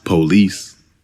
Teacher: Actually, the man in the recording stresses the second syllable, but it's often stressed on the first syllable.